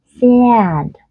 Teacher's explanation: A tức là các bạn làm vị trí âm a, nhưng các bạn nói chữ e cho mình thì nó sẽ ra là cái âm e mà các bạn hay gọi là âm e bẹt đấy, nhưng thực ra bản chất nó vẫn là âm a căng miệng nhưng nó bị nasalized